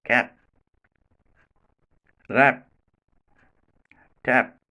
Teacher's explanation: tap yep is not made explosive at the end position because the two lips which are in touch during the articulation do not get separated immediately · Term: not made plosive